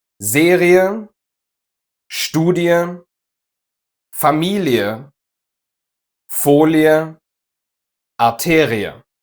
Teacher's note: In these cases, the letter combination EA makes this sound, ie. Basically e followed by a schwa.